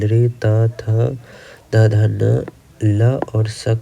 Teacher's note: लृ त थ द ध न ल और स का उच्चारण स्थान दंत होता है